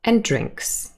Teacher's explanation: we signal this is the last item with a falling intonation